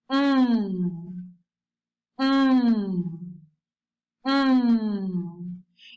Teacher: You put your lips together and then you direct the air to your nose.